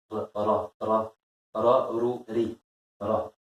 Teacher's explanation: le Ra, c'est la langue qui vient se poser juste où? Juste derrière les dents.